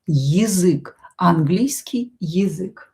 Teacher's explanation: Here this я will be reduced. We are going to pronounce it as и.